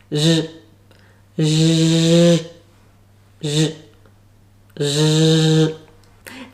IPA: ʒ